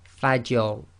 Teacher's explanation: the Fa is light, empty mouth, you must maintain that, and then you go into a heavy mouth on the Ra